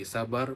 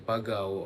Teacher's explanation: kebanyakan perkampungan di negeri Melaka masih lagi menggunakan bunyi diftong AU seperti sabar menjadi Sabau, Kabar menjadi kabau, pagar menjadi pagau ataupun ulau ular menjadi ulau.